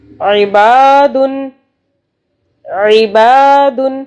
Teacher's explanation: با کو کھینچ رہے ہیں، ٹھیک ہے، عین کو حلق سے پڑھنا ہے۔